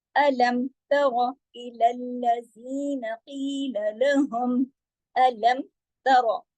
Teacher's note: अलम तरा इलल्लज़ीना क़ील लहुम, अलम तरा, सब बारीक हुरूफ है, रा को मोटा करेंगे इसलिए कि रा पे जबर है